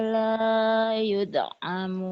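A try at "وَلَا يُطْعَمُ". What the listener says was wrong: Jangan THO. Wa huwa yut'imu wa la yut'amu. Jangan yude, jangan kedal. Jangan kede, tapi kete, THO.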